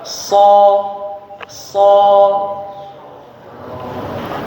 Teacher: Ujung lidah itu di belakang gigi seri bawah, gigi depan ya. Ujung lidahnya di belakang gigi depan yang bawah. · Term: huruf shad